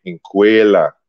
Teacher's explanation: it became inquela, because the K is rounded with the W sound. And the W next to the E, it becomes O.